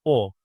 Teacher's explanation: It's a back vowel and also a round vowel.